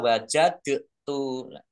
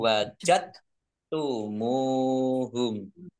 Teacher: Nah ini dalnya tidak dikolkolkan. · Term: idgham mutajanisain